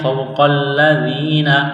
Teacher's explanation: واو ساکن سے پہلے زبر ہے، حروف لین واو ہے، اس کو کھینچنا نہیں ہے، نرمی کے ساتھ پڑھیں گے۔ قاف کو موٹا کرنا ہے، لام کے ساتھ بس کرنا ہے۔